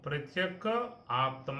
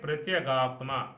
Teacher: ధీరుడు ప్రత్యక్ ఆత్మను ప్రత్యేకాత్మానం ఐక్షతు ఈక్షతు చూస్తూ ఉన్నాడు ప్రత్యక్ ఆత్మ ప్రత్యగాత్మ నువ్వు సంధి చేస్తే ఏమవుతుంది అంటే కకారం గకారంగా మారుతుంది